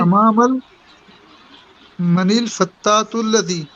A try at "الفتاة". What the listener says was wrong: فتح، کیوں زور لگا رہے ہیں؟ فتح فتح کی لاسٹ میں بولتا ہے نا.